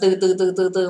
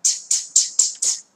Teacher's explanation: Ghi nhớ như cô là không có âm ơ là âm ư theo sau nhé